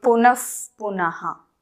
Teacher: So these sounds are produced from the lip region and therefore they are called oshtyaha.